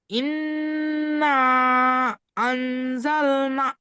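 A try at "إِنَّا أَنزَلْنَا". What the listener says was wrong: না আনজাল না, আলিফ মাদ্দা, তো লাস্টে আলিফ মাদ্দা আছে, এটাও টান হবে, এক আলিফ।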